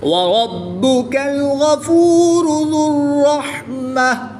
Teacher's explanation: با حروف قلقلہ میں سے ہے اور جب حروف قلقلہ مشدد ہوں تو ان میں قلقلہ خوب جماؤں کے ساتھ کرتے ہیں، اس کو قلقلہ کبریٰ بھی کہتے ہیں. غین حروف مستعلیہ میں سے ہے جس کو پوری یعنی موٹا پڑھیں گے. را پر پیش ہے تو را کو بھی پوری یعنی موٹا پڑھیں گے. · غین حروف مستعلیہ میں سے ہے جس کو پوری یعنی موٹا پڑھیں گے. را پر پیش ہے تو را کو بھی پوری یعنی موٹا پڑھیں گے. گول تا کو وقف کی حالت میں ہا ساکن سے تبدیل کر کے پڑھیں گے، خواہ اس کے اوپر کوئی بھی حرکت ہو.